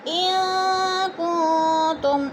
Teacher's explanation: ان کنتم، ان پہ نون ساکن کے بعد کاف آ گیا ہے تو ادھر اکفا ہو رہا ہے، غنہ کریں گے، ناک میں آواز کو چھپا کر پڑھیں گے